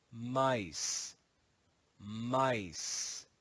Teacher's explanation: In Middle English, we learned that this word was read as misa, misa. In modern English, the long E sound changes to I, and the final schwa is silent. In Middle English, this is pronounced misa, but in modern English, it's pronounced mice, mice.